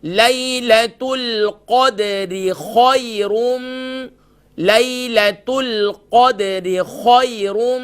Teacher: خو گلے کے ٹاپ سے ادا ہوگی